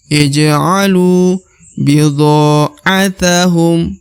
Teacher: huruf ja berharokat sukun atau mati, maka dibaca pantul